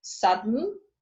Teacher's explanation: it is nasalized before nasal consonants